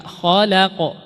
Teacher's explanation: Kemudian khalaq, huruf lamnya istifal tipis. Khala dibuka, khalaq.